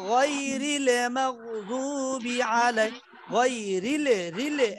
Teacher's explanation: হ্যাঁ আপনি খেয়াল করেন, রিল র দিয়া লাম ধরতে যে লামের মধ্যে কিন্তু সাকিন ছুটবে না, কলকলার মতো বাড়ি খাবে না, বরং সাকিনটা একটু সময় ধরে রাখতে হবে